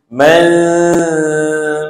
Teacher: Kena sembunyikan bunyi nun mati. Jangan dibaca penuh. Macam tu. Jangan baca man, itu penuh. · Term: ikhfa hakiki